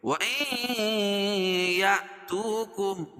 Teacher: نون ساکن کے بعد ادغام مع الغنہ کے 4 حرفوں میں سے یا آ جائے گی تو یہاں غنہ کر کے پڑھیں گے وَإِن يَأْتُوكُمْ بتایا تھا کہ حمزہ لکھی ہے اس کے اوپر